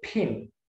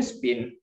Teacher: In pin, p sound has strong path or with aspiration. We say pin. And in spin is a weak puff of air. While in stop, it's no puff of air, it's just like we hold something.